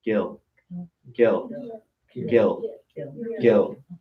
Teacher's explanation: your plane K when you see a plane K in Lakota there should be no breath of air coming out when you say it it's not aspirated